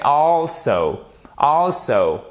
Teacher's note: vous avez l'accent tonique sur la première syllabe qui est composée de ces deux lettres, ok?